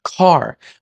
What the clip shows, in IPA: kʰaɹsən